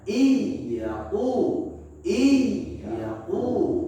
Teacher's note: Idgham artinya melebur. N-nya kita lebur ke huruf ya, huruf yang ada di depannya.